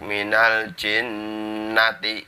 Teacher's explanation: Minal jinnati, itu jinnatinya ada nun bertasdid, jadi dibaca dengung 2 ketukan atau 2 harokat. Minal jinnati, tapi nggak boleh nunnya dibaca panjang, harus pendek.